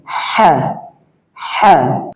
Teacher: কণ্ঠলের মধ্যখান থেকে চাপাই উচ্চারিত হবে, চাপ দিয়ে হ্যাঁ, হ্যাঁ।